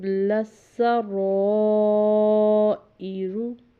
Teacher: یہاں پر سین کے اوپر شد تھی اس لیے لام کے ساتھ اس کو پہلے ملایا، پھر سین کے اوپر زبر تھی وہ ادا کی پڑھی، پھر را کے اوپر زبر ہے، آگے الف ہے، اوپر مد ہے، اس کو ہم 4 الف کے برابر لمبا کریں گے کیونکہ آگے حمزہ بھی آ رہا ہے۔ تو اور ساتھ میں را کے اوپر جب زبر ہوتی ہے یا پیش ہوتی ہے تو اس کو پر پڑھتے ہیں، یعنی موٹی آواز سے پڑھتے ہیں۔